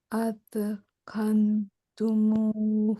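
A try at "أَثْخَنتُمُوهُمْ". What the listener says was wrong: খান সাহেব না এখানে, খন সাহেব, ঠিক আছে, আতখন।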